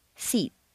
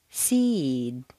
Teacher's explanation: when you have a word ending in an unvoiced consonant one that you whisper sh you'll notice that the preceding vowel is said quite quickly